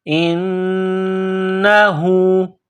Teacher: نون مشدد ہے تو آواز ناک میں پیدا کرنی ہے